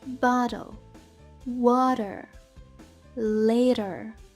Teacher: flap T вона теж як ніби дуже коротенька легесенька р